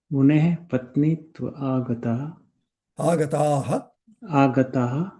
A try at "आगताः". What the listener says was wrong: दीर्घ बोलना है when it is बहुवचनम. If you say आगताः, then singular, somebody, only one person came.